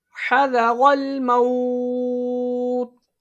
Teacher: حروف لین کے بعد عارضی سکون مد لین عارض، اس کو 3 انگلی کی مقدار کے برابر کھینچ کے پڑھا جاتا ہے